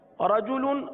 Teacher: रजुलुन रा पर जबर, रा को पुर पढ़ेंगे